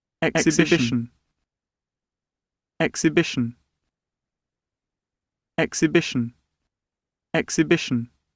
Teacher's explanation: the first and the third syllables are stressed, but then the third syllable is the most important stress. So say the third syllable loudest, longest, and clearer. · It needs the most energy. The first syllable also needs energy, but not as much as the third syllable.